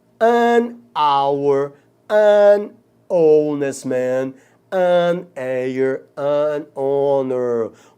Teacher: H aí, nessas 4 palavrinhas, é mudo, é como se a palavra começasse na segunda letra · Porque o H aí é mudo, gente, ele não tem o som do R. O H aqui é mudo.